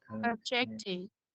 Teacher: với từ này thì mình sẽ giới thiệu em là mình sẽ nhấn vào trọng âm thứ hai